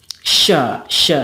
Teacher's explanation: yang membedakannya juga kalau ada sopirnya Sopir itu mendesis jadi dan Shin juga ada tambahannya yaitu tafashi atau menyembur